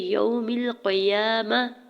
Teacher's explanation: گول تا کو وقف کی صورت میں ہا میں بدل دیں گے · واو ساکن سے پہلے یا کے اوپر زبر ہے، واو لین ہو رہا ہے، نرمی سے موڑتے ہوئے ادا کریں گے، میم کی زیر کو لام ساکن کے ساتھ ملاتے ہوئے پڑھنا ہے۔